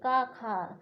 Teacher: मतलब का वर्ग जो होता कंठ से उच्चारित होता है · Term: कंठ ध्वनियाँ